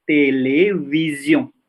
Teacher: Kalau S di antara huruf hidup harus mendesis menjadi Z